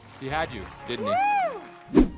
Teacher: Did you notice that Hades does not pronounce didn't he as two separate words? In order to connect didn't with he, the T sound is dropped in didn't, and the H sound in he is reduced to E.